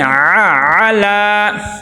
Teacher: عین کو صحیح طرح ادا کرنا ہے، حمزہ نہیں بنانا